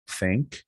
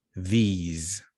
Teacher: they are called dental fricatives they happen here in the teeth between your tongue and your frontal upper teeth